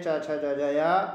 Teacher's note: चा वर्ग तालू से होता है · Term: तालव्य